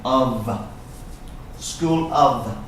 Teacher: this F here sounds like a V of School of in fact this word sounds like an AV